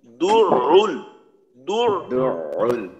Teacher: শুরুতে গোল শেষে খোলা, তারপর রুল এখানেও শুরুতে গোল শেষে খোলা , এখানে ঠোঁটের অবস্থাটা ঠিক করতে পারলে উচ্চারণটা খুব সুন্দর হবে।